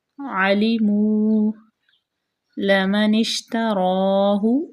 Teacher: لام کو باریک، میم بھی باریک، نون کو شین میں ملائیں گے، را جو ہے وہ پر پڑی جائے گی